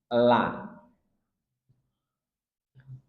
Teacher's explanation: Dan la ini dia sifatnya tarkik, tipis. Maka tidak boleh la, tapi la, ringan.